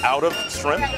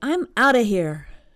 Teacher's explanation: I noticed they said out of quickly. So it almost sounds like one word